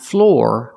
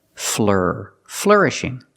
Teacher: I use the sound like burger. It's a closed sound with the R. Make a voice here, together, fleur.